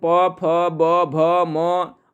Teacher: इसके अंतर्गत प, फ, ब, भ, म और उ, ह्रस्व उ और दीर्घ उ, ये सभी दोनों ओठों के स्पर्श से बोले जाते हैं, इसलिए ये सब ओष्ठ ध्वनि के उदाहरण है।